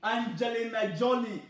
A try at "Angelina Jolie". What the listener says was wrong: Not Jolly, Jolie.